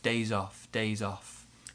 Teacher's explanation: we're going to link the Z and the O.